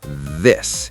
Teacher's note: th with the voiced vibration. Put my hand on my throat.